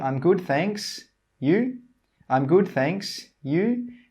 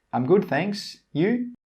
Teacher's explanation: You need to use a rising intonation. The pitch or the sound should go up.